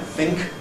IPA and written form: θɪŋk (think)